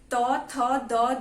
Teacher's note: बहुत बड़ा कंफ्यूजन है ये कि त वर्ग बोलते हुए जीभ तालू से लगती है, बल्कि आपको अगर आप बहुत ध्यान से बोलोगे तो त वर्ग बोलते हुए जीभ हमेशा भी आपके दांतों से टच होनी चाहिए